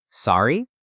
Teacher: Instead, you can use the word sorry, but you have to use it with a rising intonation. You say it like a question. · Sorry with that upward pitch is a brilliant trick.